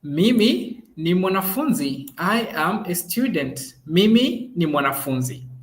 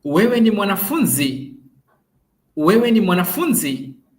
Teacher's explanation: So voice tends to fall on mwanafunzi. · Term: falling intonation